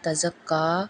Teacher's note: تا زبر تا، زا زبر کاف زک، کاف کھڑی زبر کا، تزکا، یہاں پہ زا میں سیٹی کی آواز ادا ہوگی